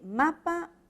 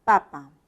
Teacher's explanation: La M es un fonema bilabial, al igual que el otro, pero el modo es distinto. Este es un fonema nasal, mientras que el otro es un fonema oclusivo.